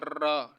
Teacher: अभी फिलहाल आप समझो, रा को प्रकंपित या लुंठित वर्ड भी बोलते हैं। लुंठित यानी जो बोलते हैं ना, जीवा लुढ़क सी जाती है